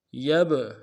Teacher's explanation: با کے اوپر جزم ہے، جزم کی وجہ سے قلقلہ ہوگا